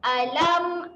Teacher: Sifat dia ketika mati huruf ain tahan. Jadi tahan di tengah kerongkong.